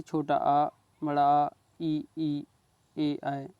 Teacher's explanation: जिन स्वरों के उच्चारण में ओंठ गोल नहीं होते हैं उन्हें क्या कहते हैं, अवृत्ताकार स्वर।